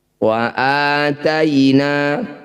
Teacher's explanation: a i u yang dibaca panjang disebut mad badal. Panjangkan a ini 1 ayunan sama dengan mad tabi'i.